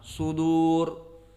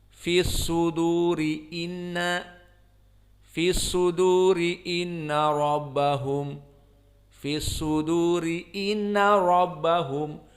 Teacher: Maka hukmul waqf penting sekali karena jika diwasalkan ra ini jadi muraqqaqah. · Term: ra muraqqaqah